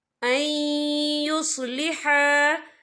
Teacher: یا دیکھیں این یہاں نون ساکن ہے، نون ساکن کے بعد جو ہے یا آ رہا ہے، اور یا جو ہے حروف یرملون میں سے ہے، تو یہاں پر ادغام ہوگا، تو ہم اسے تھوڑا سا غننے کے ساتھ پڑھیں گے۔